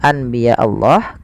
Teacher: membalikkan suara Nun menjadi suara mim awalnya Anbiya Allah karena bertemu dengan ba maka diganti dengan mim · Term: iqlab